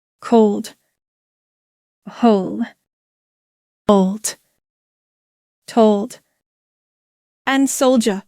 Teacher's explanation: this pronunciation sounds like oh no which comes from the back of your throat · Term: long vowel sounds